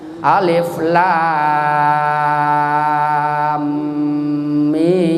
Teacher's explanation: Sebetulnya mimnya itu harus dibaca. Mimnya kan guna asliyah itu harus 3 harkat.